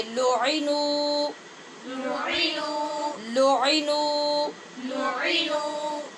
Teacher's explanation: الغافلات المؤمنات لعنوا، لعنوا اس کو لعینو نہیں پڑھنا اور لعنو نہیں پڑھنا، نہ تو عین کو نیچے لمبا زیادہ کرنا ہے اور نہ ہی نون کو چھوٹا کرنا ہے، یعنی صرف پیش پڑھنی ہے۔ عین کے نیچے صرف زیر ہے اور نون کے بعد واو مدہ ہے، لہٰذا نون کو لمبا کریں گے